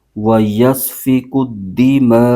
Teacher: حروف مدہ کے بعد حمزہ اسی کلمے کے اندر آ جائے تو مد متصل ہو جاتی ہے، اس کو پھر 2 الف کی مقدار لمبا کھینچ کے پڑھتے ہیں